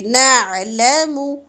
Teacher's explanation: نعلم عین وسط الحلق سے اور حرکت لمبی نہیں ہونی چاہیے